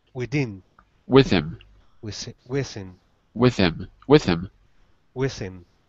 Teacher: not say the H in him